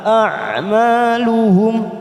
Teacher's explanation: Ain sukun Jangan samakan dengan Hamzah a lebih ke dalam